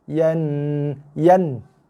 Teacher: Nun sabdu, tekan dengung dan lepaskan.